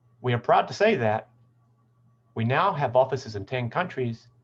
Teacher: You notice that my intonation was basically falling at the end of each thought group. This falling intonation was either partially falling at the end of non-final thought groups or fully falling at the end of final thought groups.